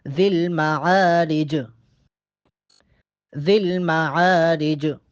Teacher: جیم کو وقف کی صورت میں ہم ساکن کریں گے، جیم پہ قلقلہ ہوگا۔